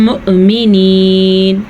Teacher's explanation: مؤمنین حمزہ پڑھیں گے اور جھٹکے کے ساتھ پڑھیں گے